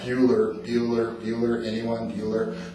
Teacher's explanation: that's a good example of a really monotone type of delivery